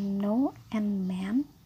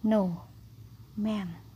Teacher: Saluran oral diblokir dengan menekan ujung lidah ke alveolar. No, man. Yang terakhir ada eng. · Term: nasal